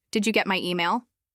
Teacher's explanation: Light rise at the end. Did you get my email? Go up on email.